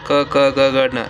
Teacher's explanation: क, क, ग, ग, न ये कंठस्थ ध्वनि है